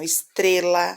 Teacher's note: estrela, a mais forte é o tre, não tem acento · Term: sílaba tônica